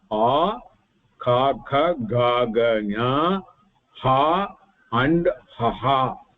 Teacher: All the sound are emanating from kantaha, throat.